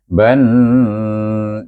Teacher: Di sini nun bertasydid kita baca ban. Wajibul gunnah dua harakat.